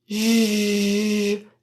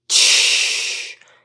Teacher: j that has a voice but no stop, and ch, it has a stop like a t but no voice, and j has the stop and voicing.